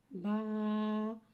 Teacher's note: बा को एक अलिफ यानी दो हरका के बराबर खींच के पढ़ते हैं बा रफे शफ विया है बा दोन नोटों के तर हिस्से · با، با کو ایک الف یعنی 2 حرکات کے برابر کھینچ کے پڑھتے ہیں۔ با حرف شفویہ ہے، با دونوں ہونٹوں کے تر حصے سے ادا ہوتا ہے